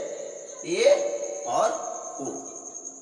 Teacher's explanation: जिन स्वरों के उच्चारण में मुख द्वार आधा बंद रहता है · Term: अर्ध समृद्ध